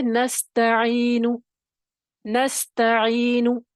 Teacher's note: دو نون ہیں اور دونوں متحرکہ ہیں اور دونوں میں غنہ اس کی لازمی اپنی ایک صفت ہے